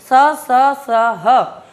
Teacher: देखिए कैसे हो रहा है घर्षण, स, ह, घर्षण हो रहा है, एक गर्मी अनुभव हो रही है